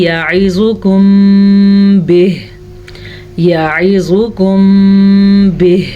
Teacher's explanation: عین کے مخرج کو ظاہر کریں، زوا کو پر پڑھیں، زوا حروف مستعلیہ میں سے ہے۔ یہاں پہ اخفاء شفوی کا قاعدہ ہو رہا ہے، جب میم ساکن کے بعد حرف با آ جائے تو اخفاء شفوی کا قاعدہ ہوتا ہے۔